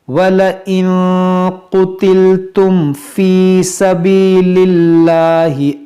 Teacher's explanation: اب میم ساکن کے بعد فا ہے تو یہاں اظہار شفوی ہوگا · نون ساکن کے بعد قاف ہے تو یہاں پر اخفا کریں گے